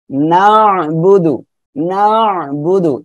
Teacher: বামে খালি আলিপ রয়েছে, মদের হরফ একালিপ টেনে পড়বেন, এই যে আইনটা গলাটা চেপে উচ্চারণ করবেন